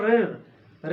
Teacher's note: जैसे हमने कहा ऋ ऋ, तो ये हमारी जीवा जो है ऋ करने से हमारी जीवा जो होती है बैक मारती है थोड़ा पीछे ऋ करने में, तो क्योंकि इसमें घर्षण थोड़ा हो रहा है।